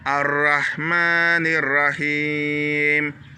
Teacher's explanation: Ici, on tire le Ma, c'est une longue syllabe.